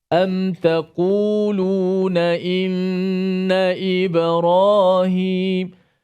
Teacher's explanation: Syafawi merujuk kepada mulut ataupun 2 bibir kita lah. Jadi bacaan tu dijelaskan bacaan mim mati tanpa dipanjangkan gunnah. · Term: izhar syafawi